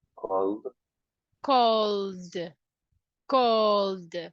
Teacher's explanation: If you see, the last sound is L. L. So we have vibration. So the ED will be pronounced as the.